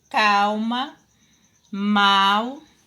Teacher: à medida que você pronuncia essa palavra o som do l é o mesmo som da letra u